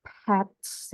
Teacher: Kalau di depan mungkin seperti di bahasa Inggris dia harus ada aspiration ya untuk pets ya pets tehnya harus ada aspiration